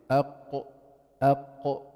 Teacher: حيرتفع اقصى اللسان جوا للحنك اللحمه الطري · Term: القاف